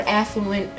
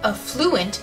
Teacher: the stress on this word is supposed to be on the first syllable